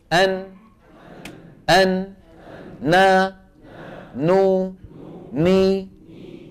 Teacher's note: عملين عملين عملين مجموعهما يشكل حرف النون العمل الاول لساني وهو ان طرف اللسان يقرع ما يحاذيه من غار الحنك والعمل الثاني غنه من فين من الخيشوم · من طرف اللسان مع ما يحاذيه من اللثة تحت مخرج اللام بقليل ويصاحبها ايه؟ غنة من الخيشوم